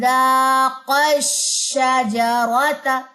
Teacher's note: قاف کو شین کے ساتھ جب آپ نے مرجنگ دینی ہے نا تب آپ کی آواز کے اوپر کو اٹھے گی آواز اور اس پہ نبر ہوگا